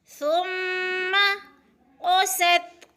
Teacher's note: سین کو سٹی کی آواز سے